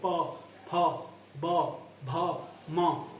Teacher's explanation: इन सभी के अंदर हमारे दोनों लिप्स टच कर रहे हैं, स्पर्श कर रहे हैं। तो इसका मतलब ये ओष्ठ्य हैं, होठ वाले आपके वर्ण हैं।